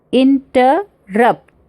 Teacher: 2 soft syllable and 1 high, means t dum, या फिर ये वर्ड है interrupt, inter मतलब 2 सॉफ्ट है, इन सॉफ्ट है, टर सॉफ्ट है, और रप्ट क्या है, हाई सिलेबल।